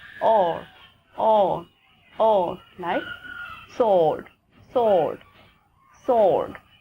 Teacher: It's actually a longer O, O, O, O. And here is also the R factor.